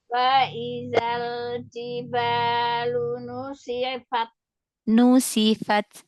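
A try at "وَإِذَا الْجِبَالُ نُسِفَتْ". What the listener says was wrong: Iya, jangan dipanjangkan ya.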